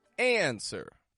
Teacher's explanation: And the stress goes strong, weak. Answer. Up, down. High, flat.